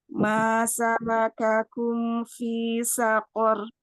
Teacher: sakor sini ro-nya dibaca tafhim